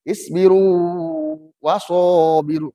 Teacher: waw bertemu dengan waw, tidak dibaca isbiru waso, tidak, tetap panjang. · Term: huruf mad